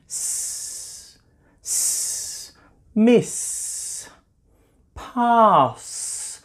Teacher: there's nothing coming from my voice box or my vocal cords there's no vibration down there because this sound is made only by air